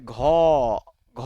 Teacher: আমাদের যে vocal কোড আছে, আপনি উচ্চারণ করলে এটা কাঁপবে। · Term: ঘোষ ধ্বনি